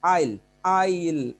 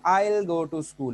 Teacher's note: weak form में दो होती हैं, एक अल और एक सिर्फ ल